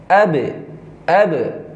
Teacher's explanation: Berarti ada sifat Qalqalah. suara yang Memantul. dipantulkan.